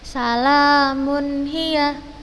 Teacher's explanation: Kemudian ha, nun mati atau tanwin an-in-un ini bertemu dengan ha, kita bacanya juga jelas. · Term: izhar